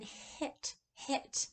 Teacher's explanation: Finally, we have the h, which is written as a lowercase h, and that is like as in hit, hit. And it's the voiceless glottal fricative. It's all the way back in that voice box in between the glottis.